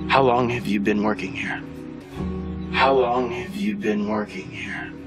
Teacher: here we're going to have our falling intonation in this question